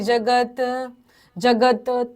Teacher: जगत त हलंत आहे अर्धा बोलायच